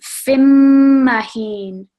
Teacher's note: So when we're joining this, we're not going to produce the noon sound that would come from the tanween. We're going to join the fa with the meme mushaddad. So we read it as fimmahin.